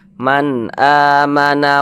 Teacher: mad badal mad badal panjangnya dua harakat